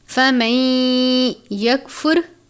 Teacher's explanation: یہاں پر ادغام کا قاعدہ لگ رہا ہے، یعنی نون ساکن کے بعد یا مشدد ہے حروف یرملون میں سے، تو ہم اس کو فمن نہیں پڑھیں گے بلکہ فمن یکفر غنہ کر کے پڑھیں گے